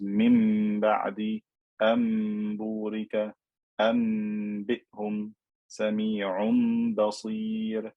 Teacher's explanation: whenever the noon with sukoon meets a ba, I'm going to convert that noon into a meme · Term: iqlab